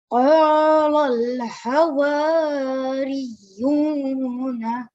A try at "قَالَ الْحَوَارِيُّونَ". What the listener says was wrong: Over here, I think you had rushed a bit. So over here, there is Madd Kabir, so it needs to be prolonged for 4 to 6 seconds.